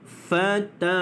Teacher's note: Mad asli huruf alif sebelumnya berbaris di atas, maka di situ kita baca la dipanjangkan 2 harakat.